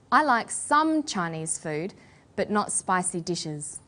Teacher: restricted or limited amount of something, we put the stress on the word some.